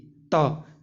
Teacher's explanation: इसका जवाब है डी, त। त जो है हमारा अल्प प्राण है, मतलब इसे बोलते समय हमारे मुख से कम वायु निकलती है